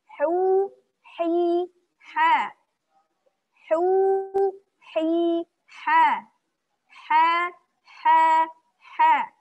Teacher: Tipis ya. Suaranya tipis, lembut. Jangan sampai ada suara garukan-garukan nih. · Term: huruf ha